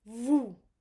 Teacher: So normally this is vous. We do not pronounce the S.